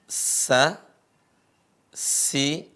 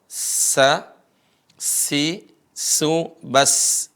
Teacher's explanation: bukan Insa ya tapi dia mengarah ke tempat keluar huruf Sin tempat keluar huruf Sin adalah ujung lisan bertemu dengan gigi seri bawah